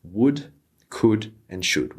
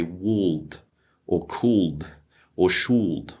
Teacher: these L's need to be silent